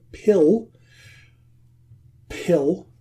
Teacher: there's no voice in the first sound there